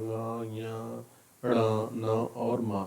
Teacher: ये चूंकि पंचम वर्ण कहे जाते हैं, इनका उच्चारण स्थान नासिका होता ही है। तो नासिका प्लस कंठादीनि।